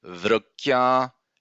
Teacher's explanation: we have this ya sound elongated in udata